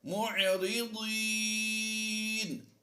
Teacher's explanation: الا کانوا عنها معرضین، نون پر جو زبر ہے وقف کی وجہ سے ہم نے اسے جزم سے بدل دینا ہے، تو یہاں پر ہم نے یا مدہ کے بعد سکون عارضی پایا، تو مد عارض کرتے ہوئے ہم کم از کم 2 الف کھینچ کر پڑھیں گے